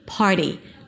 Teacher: Put a little a after. par the t becomes a d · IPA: ˈpɑːɹɾi